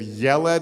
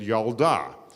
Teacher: when you make them feminine the e sound changes to an ah